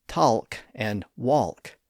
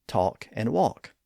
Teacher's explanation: And notice that in all of those words, the L isn't pronounced. We don't raise our tongue to that ridge above the upper teeth to make the L sound in those words. So we don't say talk and walk.